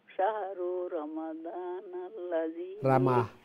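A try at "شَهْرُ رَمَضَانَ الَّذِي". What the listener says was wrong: শাহরু রামাদান রারফে জবর রামাদানাল্লাযী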